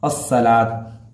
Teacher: حروف شمسی حروف میں الف لام نہیں پڑھا جاتا ہے